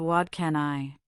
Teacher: The T sound in what becomes a soft D because it's followed by can. This is called assimilation.